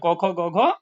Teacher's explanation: क जो वर्ग है वो क्या है, कंठ से बोले जाने वाला है। तो क में केवल क नहीं है, क ख ग घ अंग है।